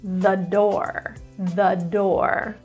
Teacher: door starts with a d which is a consonant so now we're going to use the schwa version of the